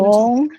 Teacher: Your gesture is wrong. Yours from high to low. It's from low to high. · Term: second tone